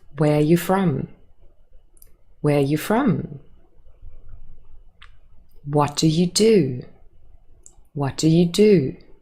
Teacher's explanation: it is a falling intonation at the end of the question